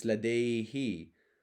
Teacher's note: an e if the suffix that is added is a who it will change to an e sound to be in harmony with the previous e sound